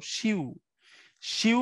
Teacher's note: তার মাঝখানে একটা ইউ ধ্বনি থাকে ইউটা একটা যৌগিক স্বরধ্বনি